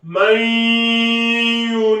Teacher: On fait bien la fusion et avec la ghunna, bien évidemment. Donc man yunibu, le idgham avec la ghunna.